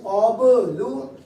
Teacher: اسی طرح با ساکن ہے یہاں پر, اب با پہ قلقلہ, قلقلہ کریں